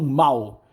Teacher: O L, em quase todo o Brasil, é pronunciado como um U.